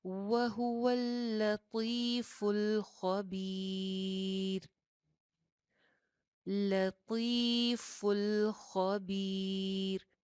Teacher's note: طا کے لیے آپ کی زبان کی جو ٹپ ہے وہ اوپر والے دو دانتوں کی جڑ میں لگے گی